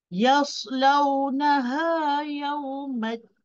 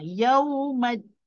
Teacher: Din belakang dekat lelangit atas belakang gigi tu. Parking hujung lidah kat situ. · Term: nun